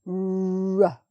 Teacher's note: in English, British English, it's right at the front of the mouth and you push your lips forward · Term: R sound